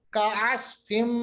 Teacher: मीम साकिन के बाद काफ, यहाँ मीम का फिर से इजहार होगा